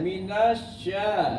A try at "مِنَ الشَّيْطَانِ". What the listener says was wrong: Jadi begitu masuk ke shin itu udah langsung langsung apa gemuruh. Minasya. Enggak ada gemuruhnya.